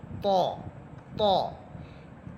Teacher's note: আমরা বাংলাতে যেমন ত থ পড়ি এমন এটা হবে ত, কিন্তু আওয়াজটা মোটা হবে, আওয়াজ মোটা হবে, মুখ ভরে বলবেন এবং এটা শক্ত হরফ, শক্ত করে পড়বেন